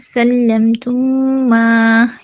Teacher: میم ساکن کے بعد مشدد میم آ رہا ہے، یہاں پہ ادغام شفوی ہے، ادغام مثلین بھی اسے کہتے ہیں، اور مد جو یہاں پہ ہو رہی ہے مد منفصل ہے کیونکہ مد کے بعد حمزہ دوسرے کلمے میں ہے۔